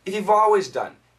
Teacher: the L it's not a full L but there is some L